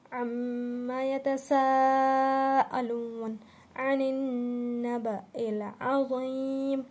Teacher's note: نون پر تشدید ہے، تشدید کی بنا پر ہم یہاں غنہ کر رہے ہیں